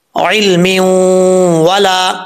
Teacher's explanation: آگے ادغام یرملون ہو رہا ہے, ایک الف کی مقدار غنہ کیا جائے گا. علم ولا, واؤ کو پڑھتے وقت ہونٹ گول کریں گے, لام کے آگے الف ہے, ایک الف کی مقدار لمبا کیا جائے گا.